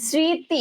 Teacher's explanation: আচ্ছা, আমি কিন্তু স্মৃতি, দেখো শ্রী দন্ত শয় রি, শ্রী এটাই উচ্চারণ করতেছি, এবং তয় রসিকার তি, এই তি উচ্চারণ করতেছি। মাঝখানে যে একটা ম আছে, ম ফলা আছে, এটা কিন্তু আমি উচ্চারণ করতেছি না।